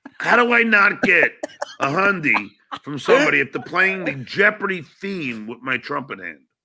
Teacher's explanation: there's a lot of vocal fry in this. It's gonna sound really weird and gross.